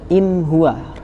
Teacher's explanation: Ketika ada nun mati ketemu ha, maka dia menjadi huruf yang jelas, idhar tanpa mendengung, tanpa gremeng kalau bahasa Jawanya.